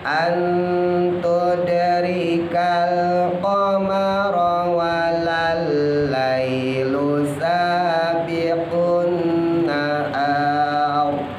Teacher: An ikhfa ya, nanti ketemu ta, hati-hati ditahan dikit.